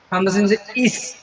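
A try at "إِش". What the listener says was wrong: ইশ একটু মোটা করে, দাঁত দুইটা চেপে একসাথে। ইশ।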